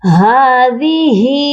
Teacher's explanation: هذه، ہا کے نیچے کھڑی زیر ہے اور اس والی ہا کے اوپر کھڑی زبر ہے، دونوں ہا کو ہم ایک ایک الف کی مقدار لمبا کر کے پڑھیں گے